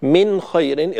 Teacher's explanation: من خير، إظهار حلقي، لا بد من بيان النون جيدا قبل الخاء حتى لا تخفى